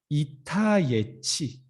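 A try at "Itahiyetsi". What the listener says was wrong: You forgot the I and between the H and Y.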